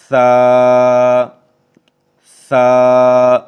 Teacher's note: اس میں سانس کی آواز ہلکی سی آ سکتی ہے ہمس کی، لیکن اس میں سیٹی کی آواز پیدا نہیں ہونی چاہیے سختی کی